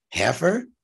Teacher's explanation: Heifer, the H sound is a guttural that matches the guttural letter qaf or Q in Arabic.